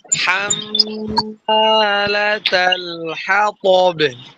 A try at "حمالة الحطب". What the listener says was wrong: ওরাগুলো হরফগুলো নরম করে।